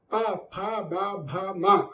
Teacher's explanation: పెదవులు రెండు కలిస్తే మాత్రమే పుడతాయి